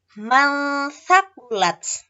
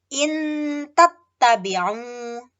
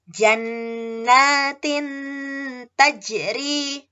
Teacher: cara membacanya adalah samar-samar dengan dengung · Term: ikhfa hakiki